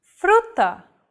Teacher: This trill sound is done by lightly tapping the gum ridge behind your upper teeth with the tip of your tongue. It should be a quick, striking motion, similar to the sensation you get when pronouncing the T in words like butter, cutter, and so on.